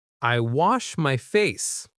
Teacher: The word wash, it's not wash like some people say. It's wa with a short A, like cat or hat. And make sure that SH at the end is clear.